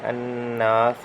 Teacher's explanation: الناس یہاں نون پہ نون مشدد کا غنہ ہے